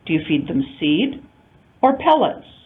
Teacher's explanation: Closed choice, two intonation units. The first one with rising intonation, the second with rising falling.